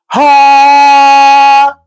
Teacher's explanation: With the ha, you release the air quickly and it runs out so quickly.